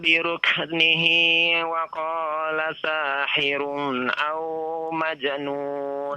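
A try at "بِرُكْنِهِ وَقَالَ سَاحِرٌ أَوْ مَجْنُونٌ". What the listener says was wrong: Ya, untuk wawu, lin, ya, lin jangan terlalu panjang ya. Satu harokat saja ya.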